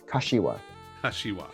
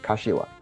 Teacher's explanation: And there's no emphasis on any syllable